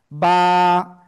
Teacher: দুই ঠোঁটের ভিজা অংশ থেকে উচ্চারিত হয়।